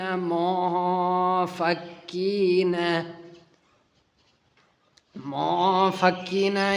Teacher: یہاں پر اخفاء کا قانون لگے گا، نون ساکن کے بعد فا آئے